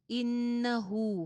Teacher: ہا کے اوپر الٹی پیش ہے، تھوڑی سی آواز لمبی ہوگی ایک الف کے برابر